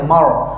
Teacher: R tebal lidah kita ke belakang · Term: ra tebal